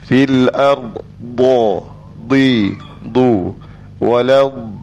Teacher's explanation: Kita sebut da ni tahan nafas, masuk dalam jahar.